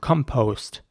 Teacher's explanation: the o at the end is very round